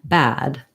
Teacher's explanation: when I have a voiced sound like a D, then I'm going to hold the vowel sound longer.